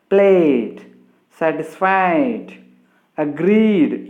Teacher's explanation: So whenever a word ends with vowel sound, as in play, a, the ed is pronounced as d